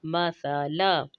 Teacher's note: सा जो है उसकी आवाज़ सीन से मुख्तलिफ होगी, इसमें सीटी नहीं होगी